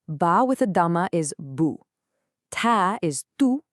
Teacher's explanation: Well, that's to remind you to make your lips into a circle. It makes a short oo sound, like in put or book. You've got to round your lips to get it right.